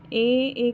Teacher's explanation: जीभ की स्थिति अग्र है, फिर उच्चारण स्थान कंठ तालव्य है, मात्रा दीर्घ है, फिर मुख विवर अर्ध विवृत है।